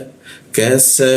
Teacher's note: Huruf ka di sikut tenggorokan kita turunkan ka. Jadi ada hembusan udara ketika membaca ka.